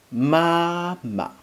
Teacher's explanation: Just a second ma in mama, which is short and light. You just pronounce it quickly and get over with it. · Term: neutral tone